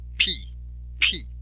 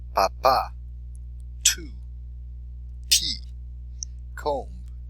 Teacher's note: pronounced with a little puff of air try it say p p you can feel it hold your